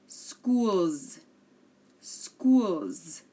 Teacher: You hear that there's a Z, but it's actually an S.